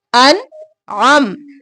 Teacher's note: عین گلے کے درمیان سے